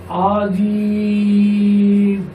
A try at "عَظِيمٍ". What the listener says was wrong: একটু নরম হবে। এটা জ তো, জিম হলে শক্ত হবে, জ হলে নরম হবে। হ্যাঁ, ওখান থেকে হিল। ইল।